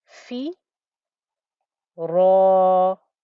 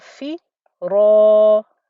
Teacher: thick, heavy 2-count stretch as well, because the ra with its fatha is thick. In Arabic, that's called mufakham.